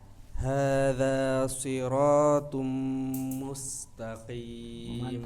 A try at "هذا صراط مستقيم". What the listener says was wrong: Mantap.